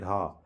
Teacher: तो क वर्ग में होने की वजह से घा जो है कंठव्य वर्ण है। और चूंकि ये वर्ग का चौथा वर्ण है अतः ये महाप्राण भी है और घोष भी है